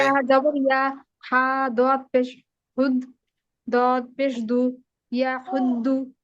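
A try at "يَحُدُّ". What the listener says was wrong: জি, মাশাআল্লাহ সুন্দর হয়েছে, কিন্তু প্রথমটা কিন্তু মিলানো হলো না। এই দেখেন, ইয়া জবর ইয়া, আ দত পেশ হুদ, ইয়াহুদ, দত পেশ দু, ইয়াহুদ্দু।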